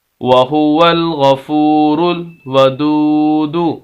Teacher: ایسی واو ساکن جس کے پچھلے لفظ کے اوپر پیش ہو، لمبا کریں گے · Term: واو مدہ